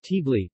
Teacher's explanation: there is a very short schwa pronounced in between the consonant cluster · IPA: /tbɔli/